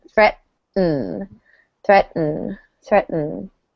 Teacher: notice that the second T kind of goes away. We have threat, and the T just, we don't really pronounce it threat.